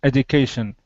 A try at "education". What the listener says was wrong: So the one small thing, just with the word education, it's got a j sound. Education.